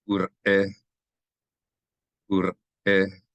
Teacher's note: Here the aleph is sounded as a consonant. It's a glottal stop because there's a vowel associated with it.